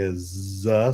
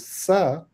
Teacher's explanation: The consonants however are a bit more complex because consonants can have vocal cord vibration like for example when I'm producing az sound z sound and in the z I'm producing it with a vocal cord vibration but when I'm producing the sister sound of z which is s I'm not vibrating the vocal cords. So in that case like you know they are voiced and voiceless sounds.